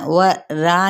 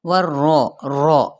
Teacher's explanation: والرسول، وہاں یہاں واو کی زبر کو را کے ساتھ اور را تشدید اوپر کیا ہے، فتحہ یعنی زبر، تو اس کو ہم نے کیا کرنا ہے، پر کر کے پڑھنا ، و را نہیں پڑھنا، و رو، رو، اور تکرار بھی،